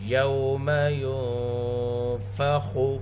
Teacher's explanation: خا حروف مستعلیہ میں سے ہے اور یہاں پر تفخیم کا تیسرا درجہ ہے